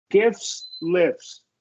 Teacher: it's between an F and an S in both of these. So we can reduce that T.